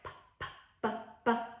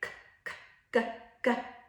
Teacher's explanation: Like some sounds are made with the front of the mouth, like p, p, b, b. Some are more in the back, like k, k, g, g.